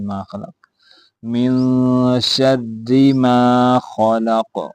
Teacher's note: قاف حروف قلقلہ میں سے ہے تو اس پہ قلقلہ بھی ہوگا